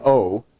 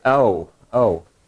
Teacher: the real New Jersey accent turns every vowel into a diphthong and every diphthong into like a four part diphthong